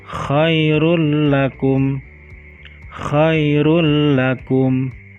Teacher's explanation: mengucapkannya dengan memasukkan suara nun mati atau tanwin pada huruf sesudahnya dan dibaca tanpa dengung. Contoh pada huruf lam.